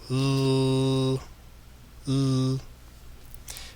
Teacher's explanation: the tongue is actually touching the gum exactly like the letter D. So the letter L is very, very similar to the letter D in terms of you have the tip of the tongue touching the gum. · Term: L sound